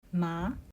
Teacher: Then we have a rising tone like you're asking a question.